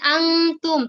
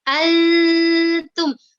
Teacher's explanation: itu cara mengucapkannya nun itu dimasukkan ke huruf ta ya, jadi bukan antum tapi altum. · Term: huruf ikhfa